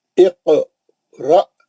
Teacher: حمزہ ساکنہ ہے، الف کے اوپر جزم ہے تو وہاں جھٹکا ہوئے گا. ابھی ہم پڑھے نا الف کے قسموں میں، حمزہ ساکنہ، حمزہ پہ اگر جزم رہا تو جھٹکا ہوتا ہے.